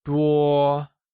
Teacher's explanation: Many translates to 多 and is pronounced using a high-level tone